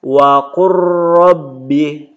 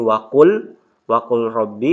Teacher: Contoh membacanya ini waqur rabbi, tidak dibaca lagi waqul rabbi, lamnya langsung ke ro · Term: idgham mutaqaribain